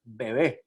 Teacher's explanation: la aproximante bilabial sonora no existe como fonema en ningún lado y sin embargo, nosotros sí que la realizamos, por ejemplo, en la palabra bebé.